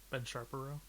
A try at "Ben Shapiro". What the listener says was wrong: it's Shapiro. There's no R there. Sharpiro.